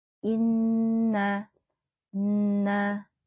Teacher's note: Nun bertasyid merupakan gunah maka bacanya harus didengungkan dulu